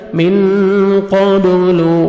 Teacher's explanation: قاف کو موٹا کر کے پڑھیں گے. با حروف قلقلہ میں سے ڈبل ساؤنڈ آئے گا